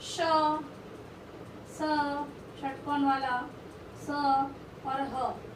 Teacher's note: मुख के दोनों अंगों के परस्पर निकट आने से वायु मार्ग संकीर्ण हो जाता है तथा हवा घर्षण के साथ निकलती है, इसलिए इन्हें संघर्षी व्यंजन कहते हैं।